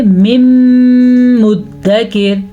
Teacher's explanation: इदगाम का मतलब होता है दो अल्फाजों को आपस में मिलाना, जैसा कि हमने मीम को मीम से मिला दिया, और मीम को मीम के साथ मिलाने के साथ यहाँ पे गुन्ने की कंडीशन भी पैदा होगी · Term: इदगाम बिल गुन्ने